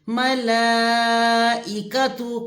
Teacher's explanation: تو اس مد کو 4 الف کے برابر کھینچا جاتا ہے. ملا اور حمزہ زیر ای کھینچنا نہیں ہے، اور اس میں عین کی آواز نہ آنے پائے